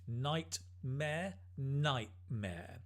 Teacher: drop the T sound in the middle